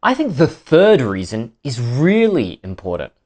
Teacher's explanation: did you notice the stress on third and really? That's sentence stress.